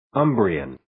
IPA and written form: 'əmbriːən (Umbrian)